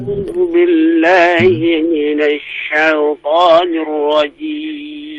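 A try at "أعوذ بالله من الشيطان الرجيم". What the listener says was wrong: Sya, dibuka mulutnya. Sya, syaitan. Ya, jadi bukan itu digabungkan antara ya, hamzah dengan ain sehingga sama sama makhrajnya. Ini keliru, Pak ya. Tapi pisahkan masing-masing makhrajnya. A'udzu billahi minasy syaithanir rajim.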